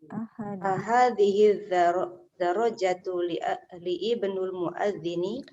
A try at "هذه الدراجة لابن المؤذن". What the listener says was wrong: Nah, itu hamzah wafal. Libni. Libnil muadzini. Libnil muadzini. هذه الدراجة لابن المؤذن. هذه الدراجة لابن المؤذن.